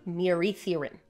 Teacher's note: the double D in Welsh is the TH sound